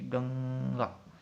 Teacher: देखते हैं तो गंगा शब्द में पंचम वर्ण प्रयुक्त होने के कारण अनुस्वार प्रयुक्त हुआ है। गंगा का उच्चारण करने पर हवा मुंह के साथ साथ नाक से निकलती है